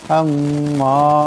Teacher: এখানে মিম মুশাদ্দাদকে এক আলিফ পরিমাণ গুণা করে পড়তে হবে।